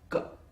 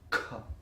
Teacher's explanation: You have ka, which is articulated with minimum breath release. The same sound, when you release with maximum breath, it becomes kha. Then in the case of ka and kha, the vocal cord is tight.